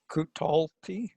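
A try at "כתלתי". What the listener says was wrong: Kutalti. Beautiful. Next one.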